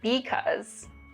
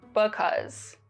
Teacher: Another remarkable feature of Chicano English is that there's less vowel reduction.